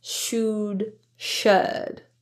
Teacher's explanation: The Upsilon vowel in should is pronounced as uh with that relaxed lip position rather than the ooh sound